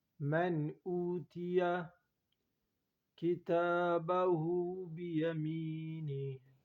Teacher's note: نون ساکن پر یہاں غنہ نہیں ہوتا کیونکہ یہاں حروف حلقی میں سے حمزہ آیا ہے